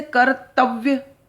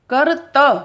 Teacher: दांतों के बीच में जीभ हमारी दब गई है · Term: द्वित्व व्यंजन